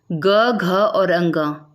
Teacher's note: वर्ण के उच्चारण में स्वरतंत्री के अधिक कंपन के कारण आवाज भारी हो जाती है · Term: घोष वर्ण